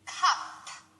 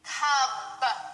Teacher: you have to make sure that your p is voiceless and your B is voiced